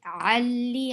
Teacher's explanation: You for ya, circle your lips. Ali, ain from your throat, and attach ain with lam because there is tashdid. And for kasra, give e sound.